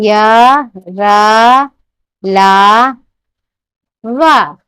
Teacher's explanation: इन व्यंजनों का उच्चारण स्वरों और व्यंजनों के मध्य का सा होने के कारण इन्हें अंतस्थ व्यंजन कहते हैं